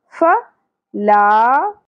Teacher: زبر زیادہ نہیں کھینچی جائے گی، یہاں الف حرف مدہ ہے، ایک الف کے برابر کھینچیں گے